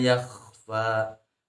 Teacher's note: jadi di ujung tenggorokan sifatnya adalah istilla kemudian alirkan suaranya disebut dengan rakhwah dan alirkan nafasnya disebut dengan sifatnya hams Ismat dan juga infitah termasuk sifat k diperhatikan makhraj dan sifatnya